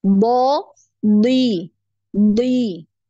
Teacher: huruf d ini tebal walaupun dalam keadaan kasrah dia tetap tebal